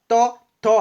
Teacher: আমাদের দাঁতের যে উপরের পার্টির যে দাঁত আছে সেই দাঁতগুলোকে স্পর্শ করছে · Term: দন্ত ব্যঞ্জন